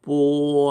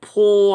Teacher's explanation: 그런데 P자를 발음할 때 포 하면 공기가 나와서 촛불이 막 흔들리든지 꺼집니다. 즉 뽀자는 무기음, 공기 내뱉지 않는 소리고 P자는 공기를 내뱉는 소리다